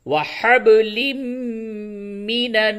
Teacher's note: با میں قلقلہ ہوگا اور تنوین کے بعد میم ہے، ادغام مع الغنہ ہوگا